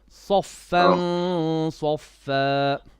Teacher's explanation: Now Sad is heavy, so the ikhfa will also be heavy.